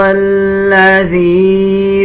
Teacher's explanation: ذال اور یا کو ملاتے ہوئے 1 سیکنڈ لمبا کیا جائے گا۔ جب یا پہ جزم آ رہا ہو اس سے پہلے والے الفاظ کے نیچے زیر آ جائے تب یہ حروف مدہ بن جاتا ہے.